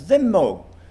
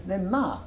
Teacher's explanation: still spoke 'thymo' as 'thymo', whereas the composer pronounced it as 'thyma' to rhyme with 'anotha'